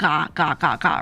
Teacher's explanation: You're using the back of your tongue to say that G sound. Right? You feel the back of your tongue hit the top of your mouth.